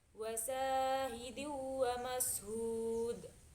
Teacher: Ada juga hukum bacaan qalqalah kubra yang dimana di ayat terakhir yaitu wa mashud. Itu dalnya itu lebih dipantulkan lebih besar.